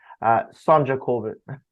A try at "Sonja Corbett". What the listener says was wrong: Sonia. Yeah, Sonia. don't say the J.